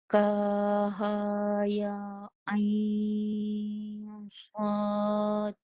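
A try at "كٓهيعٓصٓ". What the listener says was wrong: Okey, kaf ada panjang alif tu. Ka panjang 6. 6 dulu.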